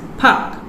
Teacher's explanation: the word has been simplified with the deletion of r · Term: deletion of a consonant cluster